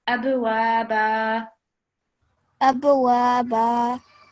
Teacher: We won't have the tanween anymore. We'll just prolong for 2 seconds. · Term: alif madda